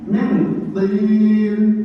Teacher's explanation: Nun mati bertemu tok, jadi samar dan mendengung. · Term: ikhfa